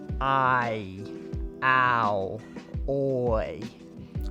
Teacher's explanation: for many people long i is produced and sounds in a way that almost resembles two vowels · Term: diphthong